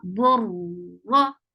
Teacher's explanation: Ra is short and it is heavy. Whenever ra is with fatha or dhamma, zabar or pesh, it creates heavy sound.